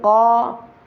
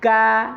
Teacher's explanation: huruf kaf ini ada di pangkal lidah dengan langit-langit yang lurus di atasnya agak keluar sedikit.